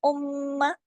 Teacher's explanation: غنہ کیا، لمبا کیا، کیونکہ ڈبل میم ہے نا، تشدید بتا رہی ہے.